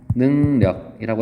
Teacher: 리을이 니은으로 바뀌었다고 볼 수가 있겠습니다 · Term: 비음화